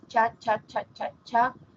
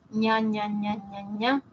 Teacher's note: tenemos detrás del alveolo el paladar duro